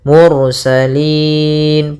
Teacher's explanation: ada ro tebal ketika melafalkan huruf rnya kita tebalkan